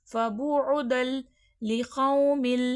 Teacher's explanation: یعنی کہ 2 لفظ ملیں گے بغیر غنہ کے، فبعدل لقوم۔ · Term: ادغام بلا غنہ